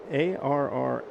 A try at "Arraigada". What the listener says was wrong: The I is extra there. Actually, Arraigada.